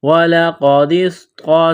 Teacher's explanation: وَلَقَدِ، دال کو صاد کے ساتھ پلس کرنا ہے، صاد میں سیٹی کی آواز پیدا کرنی ہے، صاد کو موٹا کرنا ہے۔ وَلَقَدِ اسْطَا زبر طا، طا کو موٹا کرنا ہے۔